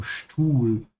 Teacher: Notice how I'm pronouncing the S and T. Because the S comes before a T, it's pronounced like sh.